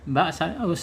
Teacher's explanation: makhrajnya asyafatain kemudian di sifatnya di asyiddah tertahannya suara qalqalah mantul